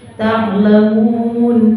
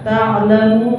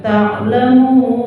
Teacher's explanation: Bacaan mad alif disukun ini boleh ibu baca 2 harakat, boleh ibu baca 4 harakat, boleh ibu baca 6 harakat.